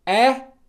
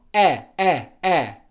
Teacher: the only real difference between these two sounds is that /æ/ is slightly more open than /ɜ/